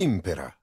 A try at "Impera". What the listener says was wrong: The only issue I'd have here is, to me, this sounds a little bit more like a statement. Command me. Impera. They put a question mark in the script.